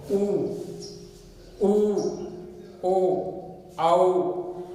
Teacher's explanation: मतलब कि इसका उच्चारण करते समय होठों की आकृति कैसी बनती है, वृत्त के समान बनती है, इसलिए इसको वृत्ताकार कहा गया है।